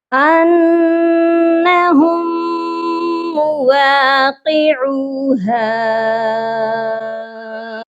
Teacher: اس کے ساتھ ہے مواقعوها، تو یہاں پر بھی وہی غلطی ہو جاتی ہے کہ ساکن اور مشدد حرف اکٹھے ہیں، ہم نے وہی فارمولا یوز کرنا ہے، ساکن لیٹر کو چھوڑ دیں گے اور مشدد کو پڑھیں گے۔ میم مشدد ہے تو اس پر غنہ بھی لازمی ہوگا